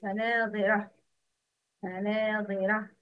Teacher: Ta marbuta is pronounced ha in stopping